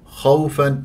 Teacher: خاء مفخم مرتبه ثانيه مفتوح وواو لين